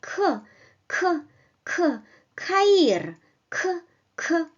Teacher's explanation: In Russian, we don't need this powerful aspiration. In fact, well, we make a mild version of this sound, like K, K, K, Kair, K, K.